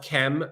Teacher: we're assuming a kind of short e between the K and the M but really what we just have is K and M